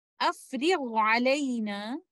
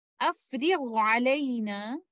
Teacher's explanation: Both of them are coming from the throat. Letter ghain comes from the top of the throat, while letter ayn comes from the middle of the throat. They are in a saghir relationship, and we will recite them clearly with izhar.